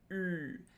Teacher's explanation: ü is a pretty tense vowel. There's kind of a lot of tension going on here in the lips and in the face when we're producing this sound. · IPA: /y:/